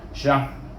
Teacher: Jadi bunyi syah, bunyi lidah kita tu berakhir dengan makhraj ra. Walaupun ra itu tidak bunyi sepenuhnya, dia bunyi lebih kurang suku saja. Syah gitu. Jangan mati syah. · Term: ra tebal